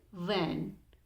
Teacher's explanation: the lower lip and the upper teeth come in contact with each other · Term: labiodental sounds